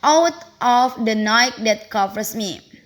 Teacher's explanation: each one unstressed syllable followed by a stressed syllable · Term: iambic tetrameter